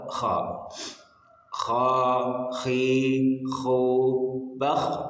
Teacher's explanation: kha harus ada serak-seraknya di tenggorokan